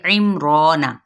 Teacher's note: آئین جون سے وسط حلق سے ادا کرتے ہوئے میم کے ساتھ ملائیں گے، را مد اصلی بالالف کا قاعدہ، نون کی حرکت کو لمبا نہیں کریں گے۔